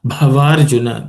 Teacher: The bha is aspirated. It's the fourth consonant in the per varga, per class of consonants.